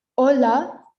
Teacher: So here we don't pronounce the H. So we don't say hola, it's hola.